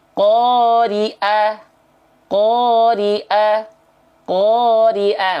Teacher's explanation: perhatikan huruf Ain, jangan sampai teman-teman lafalkan jadi Hamzah.